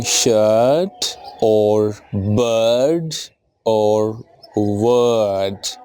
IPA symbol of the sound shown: ɜː